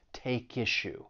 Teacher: But when you are pronouncing this phrase, keep in mind that we can link the final consonant sound in take with the beginning vowel sound in issue. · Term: linking